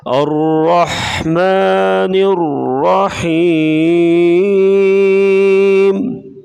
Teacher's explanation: را مشدد، اس کے اوپر زبر ہے تو را کو موٹا پڑھا جائے گا · را مشدد، اس کے اوپر زبر ہے، را کو موٹا پڑھیں گے. یا مدہ، یا ساکن، اس سے پہلے زیر ہے تو یا مدہ ہوگی، اسے ایک الف کے برابر لمبا کر کے پڑھیں گے